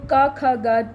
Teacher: क ख ग जब भी बोलते हैं तो कंठ से आवाज आती है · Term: क वर्ग